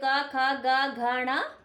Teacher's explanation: क, ख, ग, घ, ण गले से बोले जाते हैं।